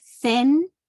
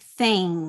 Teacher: the ing sound which you don't pronounce the G sound